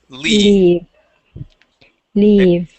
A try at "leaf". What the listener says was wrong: Okay, good with the F at the end. Okay, instead of leave, we're going to pronounce the F. Leaf.